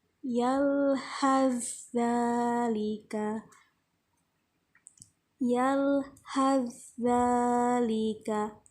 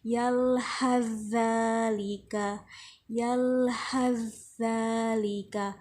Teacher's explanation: Makhrajnya juga hampir berdekatan tapi tidak sama. Nah, cara membacanya adalah diidghamkan dan ditasydidkan. Jadi cara membacanya dimasukkan huruf yang kedua, yalhazalika, yalhazalika, bukan yalhaz tapi yalhazalika.